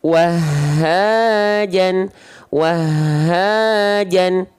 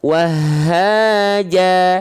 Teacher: 2 harokat dia, nama hukumnya bukan mad tobi'i tapi ya mad iwad karena asalnya fathah tain. Nah, dibaca menjadi 2 harokat karena dia berhenti, jadi nggak dibaca dengan vokal